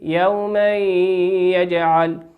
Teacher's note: وقول ربنا عز وجل يومي تنوين أتى في كلمة يوما تنوين أتى بعده حرف الياء في كلمة يجعل وهو والياء من حروف الإدغام بغنة يغن بمقدار حركتين